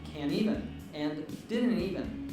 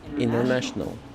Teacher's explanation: we often drop the T in word pairs such as can't even and didn't even, which results in can't even and didn't even.